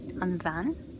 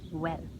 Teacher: there are two pronunciations for BH, v and w